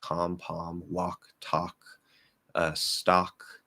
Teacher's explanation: most Americans have dropped that L, and you don't want to say any kind of L